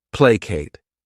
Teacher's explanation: This word has 2 syllables, and the stress is on that first syllable.